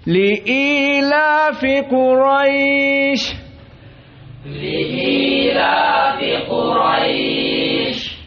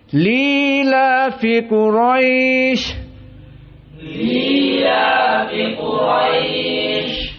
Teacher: qiraah Abu Jafar yang mana dihilangkan dari hamzahnya